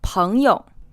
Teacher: this word is pronounced with the first syllable in the second tone and the second syllable unstressed